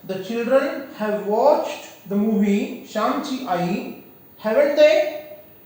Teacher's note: the question tag is to be read in rising tone